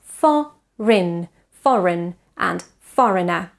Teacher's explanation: there is no eng consonant in this word. We don't say foreign, but foreign, foreign and foreigner.